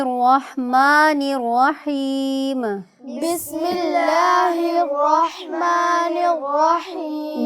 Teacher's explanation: میم کی آواز بیٹے بہت واضح اور نکھری ہوئی ادا کریں، اس میں غنہ نہیں پیدا کرنا۔